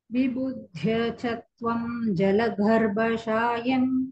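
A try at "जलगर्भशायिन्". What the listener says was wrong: ಗಾ ಗಾ ಅಲ್ಪಪ್ರಾಣ ಗ ಫಸ್ಟ್ ಗ, ಜಲಗರ್ಭಶಾಯಿನ್.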